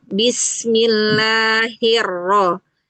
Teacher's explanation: Kalau pengucapan huruf ro, makhrajnya harus sampai menempel ya di gusi ya.